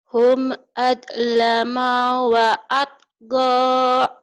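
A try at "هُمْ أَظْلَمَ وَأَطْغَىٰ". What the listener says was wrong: Maknya pendek sama zo-nya kurang rapuh. Hum azlama wa atqa. Lagi.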